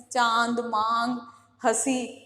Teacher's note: अनुनासिक में जो वायु है वो मुख और नाक दोनों से निकलती है, और इसको किससे, चंद्र बिंदु से प्रदर्शित किया जाता है या व्यक्त किया जाता है।